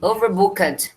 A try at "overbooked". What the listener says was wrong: Vamos trabalhar essa pronúncia aqui. Overbooked. Esquece esse é. Overbooked. Overbooked. Overbooked. Esquece o E. Overbooked. Cat.